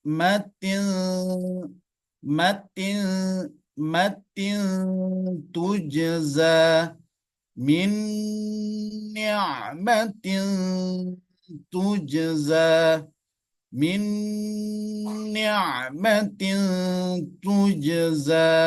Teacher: Nun sukunnya berdekatan dengan makharijul huruf ta, da, to. Yang juga merupakan huruf-huruf yang keluar dari ujung lidah. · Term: ikhfa aqrab